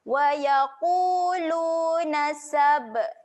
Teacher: Huruf ba ketika mati sifatnya lantun. Okey, lantunkan bunyi dia. Lantunan yang kecil. Wa yaquluna sab.